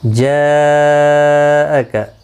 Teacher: حروف مدہ کے بعد جب بھی حمزہ آ جائے تو وہاں پر مد متصل لگتی ہے، 4 الف کی مقدار کے برابر کھینچ کر پڑھی جاتی ہے، اور یہاں پر 5 الف کی مقدار کے برابر کھینچ کر پڑھی.